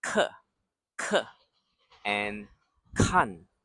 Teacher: So both with K and both are fourth tones. · 课 and 看 start with the same back of the mouth K sound as ka